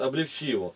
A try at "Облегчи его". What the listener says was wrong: Облегчи его. Облегчи его, легче. Ты считаешь ударение на последнее. Так француз только делает.